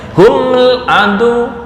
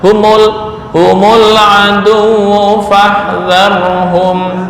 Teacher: Nah, ini kalau dibaca sukun, ntar nggak kebaca, susah bacanya. Humul adu, akhirnya dikasih harokat penolong berupa dhammah